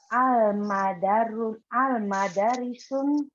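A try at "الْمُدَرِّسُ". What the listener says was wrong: Al-mudarisu. Enggak pakai tanwin juga. Al-mudarisu. Nah jadi intinya kalau kata bendanya kalau ada al tidak boleh tanwin.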